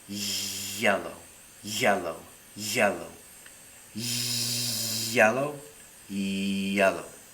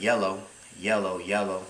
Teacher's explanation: hear the difference there between the fricative and the approximant